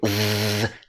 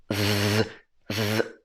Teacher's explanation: So the last part is z, z. The sound, the vocal cords are moving. Z. Tongue is right here.